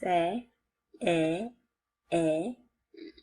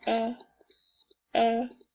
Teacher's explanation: the tongue is way down and it sounds longer